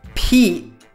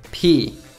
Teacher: The glottal T makes the word sound shorter